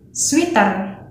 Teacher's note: This thing happens because Indonesian people usually read the EA sound in the middle of the words with E sound as in the words tea and sweet. That's why they don't pronounce it as sweater but sweeter.